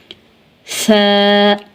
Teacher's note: ता ता ता आगे है सा को नरमी से अदा करते हैं और सा का मखरिज है नोके जुबान और सनाया औलिया के किनारे जुबान की नोक जब ऊपर वाले दांतों के अंदरूनी किनारों से मिलेगी तो सा अदा होगा